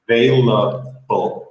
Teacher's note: the B is just your lips. It does not involve your teeth at all.